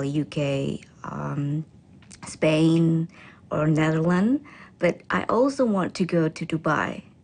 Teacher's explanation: she then lists the countries with her voice pitch rising until she ends with a level voice for Dubai